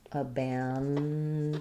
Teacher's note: We have second syllable stress. So my first letter A is going to be the unstressed schwa. The A in the stressed syllable is the a, like in bad, and then we have this letter O also is a schwa, abandoned.